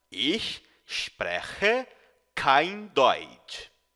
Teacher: as letras CH no alemão têm o som de um chiado, como na palavra cachorro, porém pronunciado mais no fundo da garganta